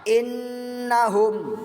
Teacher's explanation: bertasydid jadi secara bahasa bisa kita tangkap bahwa bacaan ghunnah musyaddadah ghunnah bacaan tajwid yang dibaca dengan dengung karena ada huruf yang bertasydid